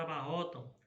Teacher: Porque o a vai falar mais forte do que o som o u.